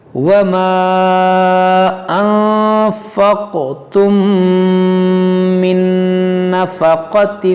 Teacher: میم ساکن کے بعد میم ہے تو یہاں پر ادغام شفوی کریں گے